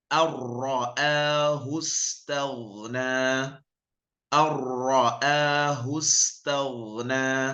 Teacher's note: Jadi langsung masuk ke ra-nya tanpa membunyikan nun matinya. Bukan an ra'a tapi ar-ra'ahu istaghna tanpa ada dengungnya, ya. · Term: idgham bila gunnah